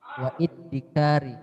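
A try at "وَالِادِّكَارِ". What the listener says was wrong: waliddikar. Jadi kalau ada hamzah wasol ya, itu langsung dibaca walid dengan lamnya dibaca waliddikar gitu. Kalau ada hamzah kotoknya wal iddikar gitu.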